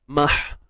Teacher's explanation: Huruf ha yang sukun pastikan tidak ada unsur kita sempitkan tengah kerongkong. Kalau tidak dia jadi huruf ha pedas lah. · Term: ha simple